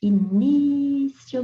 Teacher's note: sílaba mais forte e se você pronunciar devagar a palavra início você vai ver que a sílaba tônica é a penúltima